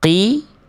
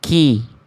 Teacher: Kalau qaf kan lebih dalam. Nih, qaf nih, lebih dalam. Tidak menghasilkan percikan nafas. Kalau kaf lebih luar, akhirnya menghasilkan percikan nafas.